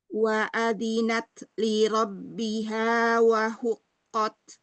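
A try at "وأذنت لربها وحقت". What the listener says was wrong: Nafas saja. Wa adhi, dzalnya dialirkan suaranya. Wa adhinat. Mau ro tebal ya. Li rabbiha.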